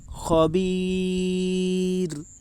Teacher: رائے ساکنہ سے پہلے یا ساکن ہے اس لیے رائے ساکنہ باریک ہوگی